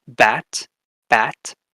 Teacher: Bilabial, so it combines both lips, your bottom lip with your top lip. So you get something like the B in English, bat, bat.